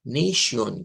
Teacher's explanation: en el inglés cambia la a por un sonido e